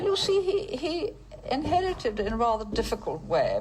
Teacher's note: there's a lot of something which we call vocal fry which is when you kind of relax you don't really vocalize properly